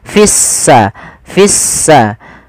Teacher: kita baca sehingga di sini lamnya ditandai dengan warna abu-abu artinya lamnya dianggap tidak ada sehingga langsung diidgamkan ke huruf Sin sehingga sinnya berharakat tasdid seakan-akan s-nya dua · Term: alif lam syamsiyah